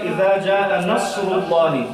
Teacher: صاد کو اس کی آواز میں تھوڑی جو ہے وہ پر آواز کے ساتھ اس کو پڑھنا چاہیے۔ تجوید کے اصطلاح میں استعلاء اور اطباق کی صفات اس کے اندر پائی جاتی ہیں، اور سین جو ہے اس میں یہ چیزیں نہیں ہیں، یہ صفات نہیں ہیں، ان کو باریک آواز سے جو ہے وہ پڑھا جاتا ہے۔